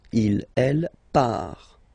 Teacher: Final T not pronounced.